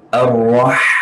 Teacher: Ra memiliki sifatul isti'la sebab barisnya baris atas. dan tasydid. Jadi ra ini harus tebal.